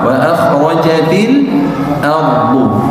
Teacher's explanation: membiasakan diri untuk menebalkan huruf ra sukun yang diawali sama huruf berharakat fathah